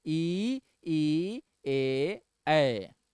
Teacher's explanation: ई ई ए कहां से दबाव पड़ा, आगे वाली जीभ दब गई होगी